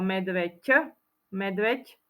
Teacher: to medveď také krásne zviera končí sa na ď spoluhlásku ď spoluhláska ď je párová znelá ale vyslovuje sa ako medveď ť